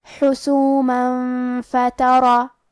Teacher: کلمت حسومہ میں میم پہ تنوین زبر ہے، پھر حرف الفا ہے۔ فا حروف الاخفاء میں سے ہے، تو ہم یہ حکم کو غنہ کے ساتھ ادا کریں گے